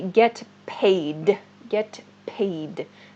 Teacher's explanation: in fast speech, this sounds like get pay, but it's actually get paid